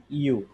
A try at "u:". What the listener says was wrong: জি, একটু টান দিয়ে হবে ইউ, কারণ এখানে কোলন টাইপের ওটা আছে, হ্যাঁ।